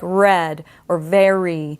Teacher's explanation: it's not made with the root and it's not made with the tip and blade it's made with the back of the tongue it's a bunched molar R · it's got to be a bunched molar R even before the vowel sounds like red or very we're going to need that heavier R sound in order to